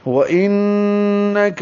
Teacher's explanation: انک میں نون مشدد ہے، غنہ کریں گے، کاف باریک ہے، لام باریک ہے، میم کو جلدی اور معروف طریقے سے پڑھنا ہے، نون کو لام سے ملانا ہے. · نل لام ساکن پہ اظہار ہے، مرسلین میں را پر ہے، موٹا پڑھیں گے، میم کو ہونٹوں کو بند کرنے سے نکالیں گے. سلین سین سیٹی جیسی آواز سے.